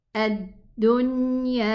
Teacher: The noon has bayniya, it's tawassut, so it needs a little bit of time in its exit until the ghunna sound is complete. Ad-dunya. 2 counts for the alif.